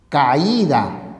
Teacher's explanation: ¿Y por qué la secuencia homosilábica se rompe? Porque la mayor fuerza de voz o acento recae en la vocal cerrada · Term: hiato acentual